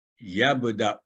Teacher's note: تو یہاں او آواز لمبی نہیں ہوئی، حالانکہ نیچے واو ہے لیکن واو کے اوپر کیونکہ حمزہ ہے، حمزہ واو بطور چیر کے ہے تو یبدأ آگے آباؤنا، تو یہاں بھی دیکھا ہم نے واو نہیں پڑھی گئی، صرف حمزہ کی دمہ کے ساتھ اسے پڑھا گیا.